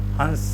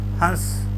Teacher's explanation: उच्चारण करते समय नाक से और मुंह दोनों से हवा निकले · हंस मुंह से भी निकली और नाक से भी निकली है, तो दोनों के चिन्ह लगा दें, मुंह वाला भी और नाक वाला भी।